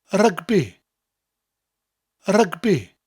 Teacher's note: Rugby in English and Welsh are very similar, but the Welsh version has a rolling R, and you emphasise the syllables slightly more